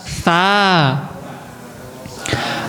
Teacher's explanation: Kalau yang kayak tak titiknya 3 itu lidahnya dikenakan gigi atas.